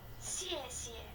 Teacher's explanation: the first sound is fourth tone, and the second sound isn't stressed. It's called toneless or neutral.